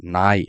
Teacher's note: நாவின் நுனி மேல்வாய் பல்லின் அடிப்பகுதியை தொடுவதால் நகரம் பிறக்கிறது